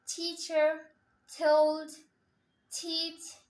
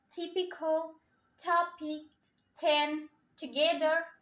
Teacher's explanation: ট সাউন্ড দিয়ে শুরু হওয়া ওয়ার্ডগুলোকে আমরা ঠ দিয়ে উচ্চারণ করব।